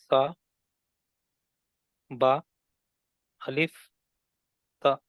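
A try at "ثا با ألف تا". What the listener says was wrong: Excellent అండి.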